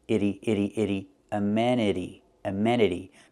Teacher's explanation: The T is pronounced with a fast D.